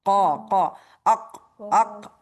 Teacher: जुबान की जड़ जब ऊपर नरम तालु से लगे तो वहां से काफ अदा होता है।